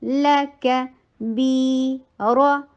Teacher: بی ٹو حرکہ long رو heavy رو اور short لا کا جتنا لا کا شارٹ ہے اتنا ہی رو شارٹ ہے لیکن بی بیچ میں ٹو حرکہ لانگ ہے